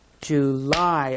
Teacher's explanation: Where's the stress on July? July. On the last of the word.